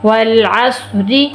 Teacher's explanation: را بریک ہوگی، اس کے نیچے زیر ہے